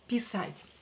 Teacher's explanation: Here, A is stressed, not E.